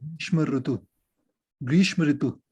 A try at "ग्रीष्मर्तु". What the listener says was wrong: नहीं, जोड़िए अच्छे से। ग्रीष्म प्लस अर प्लस तू हो, क्या होगा, ग्रीष्मर, देखिए ऐसा होगा ग्रीष्मर्तु। ग्रीष्म प्लस ऋतु क्या बनेगा, ग्रीष्मर्तु। ये रेफ यहाँ पे ऊपर चला गया इसके, और ये अ इसके साथ जुड़ गया।